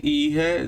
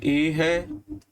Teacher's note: इन सभी का उच्चारण करेंगे तो हमारे ओष्ठ की आकृति जो है वो वृत्ताकार नहीं होती है, इसीलिए इसे अवृत्ताकार स्वर कहा जाता है।